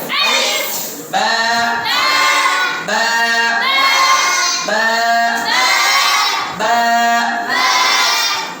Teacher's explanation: দুই ঠোঁট মিলিত অবস্থায় থাকবে, জড়িত অবস্থায়